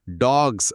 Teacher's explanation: చేర్చినప్పుడు అది డాగ్స్ అని జ్ శబ్దంతో పలకాలి. జ్ అనేది వాయిస్డ్.